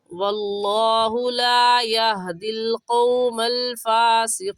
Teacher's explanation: لا کو ہم تھوڑا سا کھینچیں گے، کیونکہ الف سے پہلے زبر آ گیا تو الف مدہ کہلائے گا، اس وجہ سے اس لا کو کھینچیں گے۔